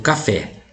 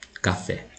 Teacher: É a última sílaba que é a forte. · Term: oxítona